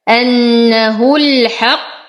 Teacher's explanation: أنه نشد النون بغنى أكمل ما تكون، أنتقل من ضمة الهاء إلى إسكان اللام، همزة الوصل تسقط في درج الكلام. أنه الحق، أشد القاف وأعطيها درجة التفخيم